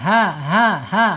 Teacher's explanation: Ha makhrajnya ada di bawah tenggorokan.